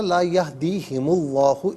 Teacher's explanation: اللہ کے حرف لام کو پر کر کے پڑھیں گے